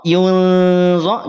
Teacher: Perhatikan, angkat pangkal lidah yunzo, bukan dimonyongkan. Yunzo ini diangkat pangkal lidahnya.